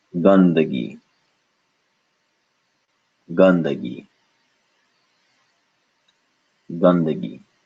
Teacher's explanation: a duh with the tongue touching the teeth and nowhere else in the mouth